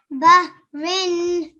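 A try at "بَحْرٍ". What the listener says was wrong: bahrin. Okay, make sure to read the ha from your throat. Okay, so I can hear the hissing sound. Bah. Can you say bah? Bah. Bahrin.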